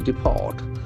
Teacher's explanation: Since it is a verb, the accent falls on the second syllable.